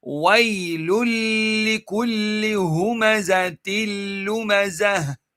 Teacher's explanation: the next dhamma, which is the noon sakin one, is being merged into the lam. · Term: idghamu bila gunnah